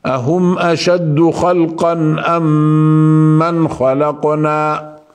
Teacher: وهذا يقال له اظهار شفوي يعني بالشفتين نظهر الميم الساكنه المظهره